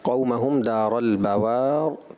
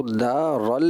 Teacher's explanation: آپ نے فتح یعنی زبر کو مشابہ ضمہ یعنی پیش کی طرف آپ نے مائل کر دیا۔ مجھے ایسا لگا شاید پر کرنے کی وجہ سے یہ زیادہ ایکسٹرا پر ہو گیا آپ سے، جس کی وجہ سے یہ دارل کی طرف مائل ہو رہا تھا۔